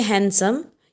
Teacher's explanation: When you say handsome, you don't pronounce D.